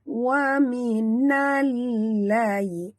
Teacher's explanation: masukkan bunyi nun terus ke dalam lam disertai dengan tekan.